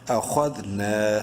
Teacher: نون کو ایک الف کے برابر لمبا کریں گے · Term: الف مدہ